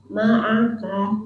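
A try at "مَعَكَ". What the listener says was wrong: Ka tipis.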